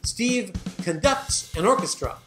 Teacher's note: When you stress the second syllable, it means to direct an orchestra.